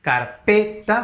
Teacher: fuerza de voz en la P, es prosódico porque solo es entonación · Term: acento prosódico